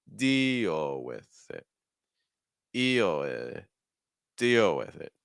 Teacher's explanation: deal is your stressed word is going to start with your highest pitch